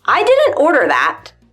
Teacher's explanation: I didn't order that sounds very abrupt and short almost aggressive